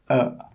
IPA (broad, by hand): ə